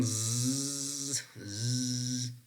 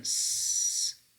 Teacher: When you are pronouncing that prolonged z, you feel a very strong vibration in your throat, or technically in your vocal folds, right?